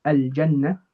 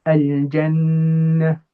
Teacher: I'm going to hold that hum for 2 counts. So rather than saying al-jannah, I'm going to say al-jannah. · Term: double ghunnah